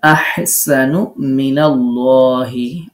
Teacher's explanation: আল্লাহ শব্দে লাম পোর হবে এক আলিফ মাদ হবে